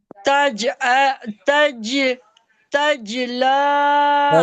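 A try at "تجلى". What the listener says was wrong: तजला नहीं, जीम को आप साकिन कर रही हैं, जीम के ऊपर जबर है, जीम को लाम से मिलाना है। तज।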